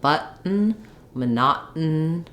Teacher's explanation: I don't have an aspirated T there we have an unreleased T and we basically drop the vowel and the n Sound is becomes a a syllable so the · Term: syllabic N